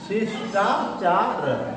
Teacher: आगे देखिए शिष्टाचार, यहाँ डबल सा जो है बड़ा ये नहीं आएगा, आगे जो है बड़ा सा रहेगा कि बीच में जो है मूर्धन्य सा, षटकोण सा जैसे बोलते हैं, ये वाला सा शिष्टाचार होता है, जो षटकोण वाला सा बीच में रहेगा ये आधा शिष्टाचार।